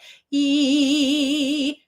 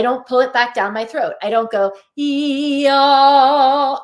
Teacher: Okay, so making sure that your tongue is much more forward than you probably recognize it needs to be. E, my tongue is high and wide and coming up to my hard palate. E, and then when I go to ah, I don't pull it back down my throat.